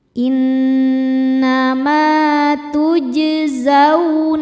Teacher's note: Innama tujzauna Huruf jim sukun hukumnya qalqalah sugro karena jimnya sukun asli dan berada di tengah bacaan. Cara bacanya jim dipantulkan dengan pantulan yang kecil.